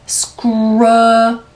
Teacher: K 소리는 된 소리가 될 수밖에 없습니다. screw, 더 크게 여는 소리 들어가야 되죠.